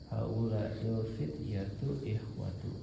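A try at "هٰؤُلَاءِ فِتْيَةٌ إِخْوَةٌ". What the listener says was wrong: ikhwatun. kalau nggak ada alif lam dibaca tanwin. Jangan ragu ya, jangan ragu kalau nggak ada alif lam dibacanya tanwin.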